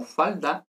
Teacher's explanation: en una palabra como falda, la D es oclusiva